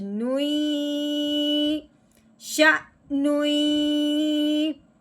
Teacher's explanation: اب ہم نے نون کو یا مشدد کے ساتھ ملانا ہے اور ساتھ ساتھ غنہ کرنا ہے